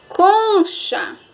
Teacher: a penúltima sílaba da palavra exemplo do livro aí com concha o com foi o mais forte né foi a sílaba mais forte da palavra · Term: paroxítona